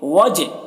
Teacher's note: جیم میں قلقلہ کریں گے کیونکہ جیم حروف قلقلہ میں سے ہے اور اس کے اوپر جزم ہے، وجہ اللہ، یہ اللہ کے